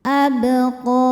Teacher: Cara bacanya memantul dengan pantulan yang kecil. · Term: qalqalah sugro